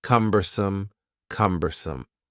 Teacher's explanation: has 3 syllables, and the stress is on the first syllable